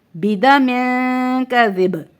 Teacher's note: کاف باریک حروف میں سے ہے تو باریک غنہ ہوگا یہاں پہ